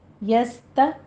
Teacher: سین پر ہمس ہوگا سیٹی کی آواز کے ساتھ